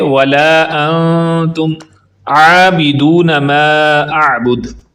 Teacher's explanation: ولا کو لمبا کریں گے مد منفصل کی وجہ سے، انتم پر اخفا ہو رہا ہے، آواز کو ناک پہ چھپا کر پڑھیں گے